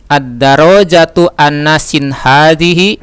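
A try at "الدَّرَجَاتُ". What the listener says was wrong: Jangan disambung dengan ad. A, dia terpisah. A. Ra-nya ditasdid. Ad-darajatu.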